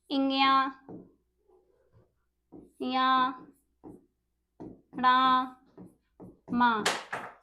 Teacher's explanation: अनुनासिक मतलब इनको बोलने में जो हमारी हवा होती है वह नाक और मुंह दोनों से निकलती है।